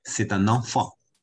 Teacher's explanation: c'est▁d'un▁enfant，▁它有两次连诵